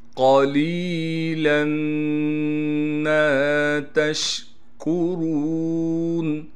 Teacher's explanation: قاف کو موٹا کر کے پڑھنا ہے، قاف کے بعد لام ہے اور لام کے بعد یا ساکن ہے، یا ساکن حروف مدہ میں سے ہے لہٰذا لام کو ایک الف کی مقدار کھینچیں گے اور لام پر تنوین آ گئی ہے۔ · اس تنوین کو ختم کر کے لام کو میم سے ملائیں گے غنہ کے ساتھ · میم پر تشدید ہونے کی وجہ سے غنہ کریں گے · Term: ادغام